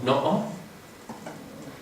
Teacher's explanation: es un Saltillo que se hace cerrando la glotis · el tercer sonido es un Saltillo o un cierre glotal